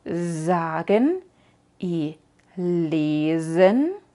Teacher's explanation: Puedes ver que vibra tu voz cuando lo dices, al menos debería vibrar, y entonces sabes que lo dices bien.